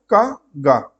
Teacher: इन व्यंजनों के उच्चारण में मुख द्वार वायु का निर्गमन कम होता है तथा स्फोट भी अल्प ही होता है। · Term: अल्प प्राण व्यंजन